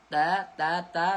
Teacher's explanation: hujung lidah pergi dekat gusi gigi atas ta. Sebutan dia nipis. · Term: Sebutan yang nipis